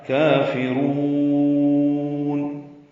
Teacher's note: کافرون میں کاف کھڑا زبر, قائم مقام مد اصلی 2 حرکات لمبا ہے. کاف باریک ہے, را پر ہے, را کو موٹا پڑھیں گے اور لمبا کریں گے. وقفاً نون ساکن پہ اظہار.